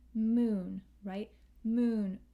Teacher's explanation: this u which is long double o or long u without the y as in the word moon